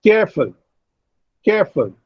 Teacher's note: care receives greater breath force and full receives less breath force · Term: stressed syllable